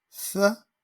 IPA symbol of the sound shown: ð